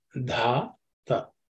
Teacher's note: Dhata The first letter is Dha. This Dha is the fourth letter in the Tavarga. So, it has be aspirated.